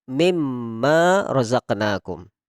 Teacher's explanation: Ketika ada nun sukun bertemu dengan mim, maka langsung kita tanpa membaca nunnya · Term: bigunnatin